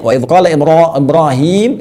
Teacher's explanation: Jadi dibacanya waqala Ibrahim itu menggunakan tafhim rnya ya